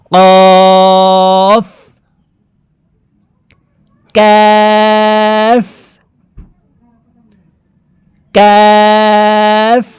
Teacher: কফ হরফকে জিহ্বার গোড়া তার বরাবর উপরের তালুর সঙ্গে লাগাইয়া উচ্চারণ করব।